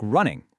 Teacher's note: But for a word like running, the gate drops open for the N sounds, letting everything resonate up in your nose.